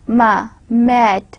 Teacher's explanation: Again, I am combining two lips, ma, mat, and having a nasal quality, because in the ma sound there is a little bit nasal orientation is there.